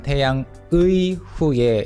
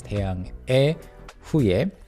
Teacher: this one 태양의 후예 would be the literal pronunciation of the word 의 but then in spoken Korean it's often pronounced as 태양[에] 후예